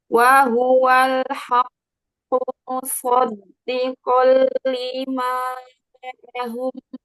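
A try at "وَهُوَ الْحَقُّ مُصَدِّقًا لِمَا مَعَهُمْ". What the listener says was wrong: Tahan lagi lam sukunnya sedikit, jangan terburu-buru. Wahuwal. Wahuwal. Musoddiqo.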